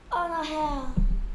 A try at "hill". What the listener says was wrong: 헬이 아니고 hill.